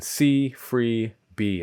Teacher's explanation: It should end with a vowel, e, the high front tense vowel. That means the body of your tongue is high in your mouth, closer to your palate, and closer to the front of the mouth. It's the vowel in see, free, be, at least in my accent.